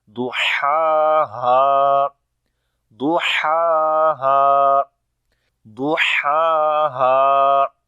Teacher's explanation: And make sure to read both letters sound separate, because the first is ha, which sound comes from the middle of the throat, and the second is ha, which sound comes from the bottom of the throat.